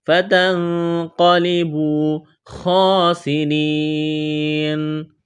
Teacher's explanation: فتنقلبوا خاسرین، خوا کو موٹا کرنا ہے، کڑا زبر ہے، سین میں سیٹی کی آواز پیدا کریں گے، را کو باریک کرنا ہے، را کے نیچے زیر ہے، یا مدہ ہے، الف کے برابر کھینچنا ہے۔